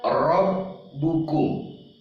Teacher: Ini Bapak dan Ibu ketika ro berbaris di atas. Berbaris di atas, rob bukum, dibaca tebal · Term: tafkhim atau tebal